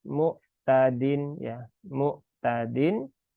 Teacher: ain sukun ini bisa berubah menjadi Hamzah